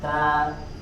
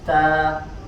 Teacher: sifat hams ini dibaca disempurnakan juga dengan tidak berlebihan. Jadi dia ada sedikit angin yang keluar.